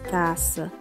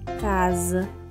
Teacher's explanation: Segundo as regras fonéticas e ortográficas da língua portuguesa, quando a consoante S aparece no meio das palavras que tem posição intervocálica, ou seja, quando o S aparece entre duas vogais, esse S ele assume a pronúncia de Z